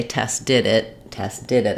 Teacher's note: I would say Tess did it Tess did it I would stress on the did